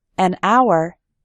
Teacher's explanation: in the word hour, the h is silent, so we say an hour.